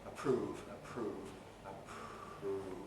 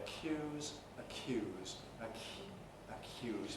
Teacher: the aspiration, again, takes the shape of devoicing the following consonant, the R or the Y. So when we say approve, approve, we get voiceless R, approve, approve, approve.